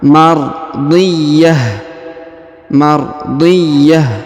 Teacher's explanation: ya berharakat tasdid maka kita tahan dan kita tekan nardhiyah kemudian huruf ta marbutah yang di ujung sebagaimana teorinya ya kita rubah menjadi ha sukun